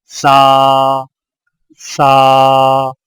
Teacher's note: سا کی ادائیگی میں زبان کی نوک کو سامنے والے اوپر کے 2 دانتوں کے اندرونی کناروں سے نرمی سے لگا کر باریک آواز میں پڑھیں، یعنی سا، سا۔